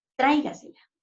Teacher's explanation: si la pronunciamos, tráigasela. Hacemos mayor fuerza de voz en tra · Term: sobresdrújulas